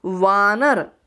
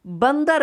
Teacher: वानर शब्द रूपांतरित हो जाता है बंदर में, यानी आ की मात्रा अ में हो गई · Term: दीर्घ से ह्रस्व